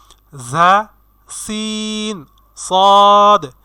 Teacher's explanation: জিহ্বার আগা সামনের নিচের দুই দাঁতের আগার সঙ্গে লাগাইয়া উচ্চারিত হবে 3টি হরফ। সেই 3টি হরফ হচ্ছে ঝা, সিন, সদ।